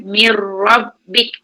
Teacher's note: Itu sifat ra yang takrir. Ada getaran.